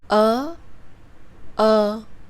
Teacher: both those sounds are central vowels. Therefore, in terms of tongue and mouth position, there is not much difference between those two sounds.